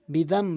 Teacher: নুনকে না ধরে মিমকে ধরে গুন্না করব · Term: ইকলাবের নিয়ম